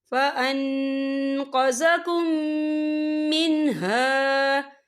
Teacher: یہ دیکھیں فَأَنْقَذَكُم، یہاں میم ساکن ہے، میم ساکن کے بعد جو ہے میم مشدد والا حروف آ رہا ہے، تو یہاں پر ادغام شفوی ہوگا۔ ہم پچھلے میم کو اگلے میم میں مدغم کریں گے، اور ہم یہاں غنہ بھی کریں گے۔